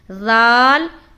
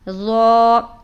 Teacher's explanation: ذال کو ہم باریک ادا کرتے ہیں اور ضا کو موٹا کر کے ادا کرتے ہیں